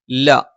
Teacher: ല നാവിന്റെ അറ്റം മേലെ മുൻപല്ലിന്റെ മോണയിൽ